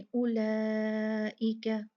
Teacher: لا مد بنی، حمزہ آ گیا ایک ہی لفظ میں تو کیا ہو گیا؟ مد 4 کاؤنٹ ہو گئی